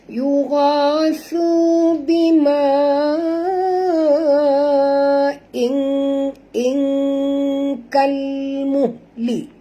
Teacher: kita kena sembunyikan atau sorokkan bunyi tanwin ini ke dalam huruf kaf disertai dengan dengung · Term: ikhfa hakiki